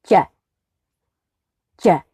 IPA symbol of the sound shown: ʤ